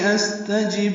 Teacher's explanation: سین ساکن پہ حمز، تا باریک، جیم کو با سے ملائیں گے، با ساکن پہ قلقلہ ہے